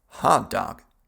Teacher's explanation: другая половина американцев поступает проще и произносит А в обоих слогах.